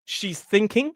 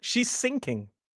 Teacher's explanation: Think tip of the tongue on the teeth. Slightly further back in the mouth and up towards the top. It's a different position, but if you move that, that's an example of a minimal pair with consonant sounds.